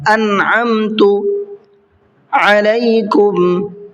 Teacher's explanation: علیکم میں بھی عین ہے، اس کو بھی حلق سے نکال کر کے ادا کرنا ہے